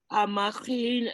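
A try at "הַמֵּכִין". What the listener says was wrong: Nice. Except it's mechim. Hamechim. You see the 2 dots.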